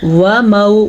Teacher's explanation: वाव को लंबा नहीं करना, वाव के ऊपर ज़बर है, आगे वाव लीन है तो इस वाव को भी लंबा नहीं करना।